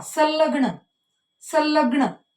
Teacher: संलग्न कशाचा उच्चार जास्त ऐकायला येतो आपल्याला, लचा. पहा, संलग्न म्हणजे या ठिकाणी ल हे काय झाले, अर्ध अनुनासिक झाले.